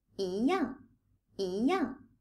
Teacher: First of all, when yi is followed by a fourth tone, it becomes a second tone.